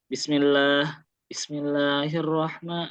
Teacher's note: sin itu dia masuk kategori yang mengalir sempurna. Jadi, agak lama durasinya kan kalau baca bismillah tuntasin dulu bismillahirrah gitu ya.